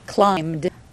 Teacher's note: there's no vowel, no separate syllable, just a D sound added to the end.